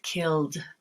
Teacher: And L as in killed, L voiced, D voiced, killed.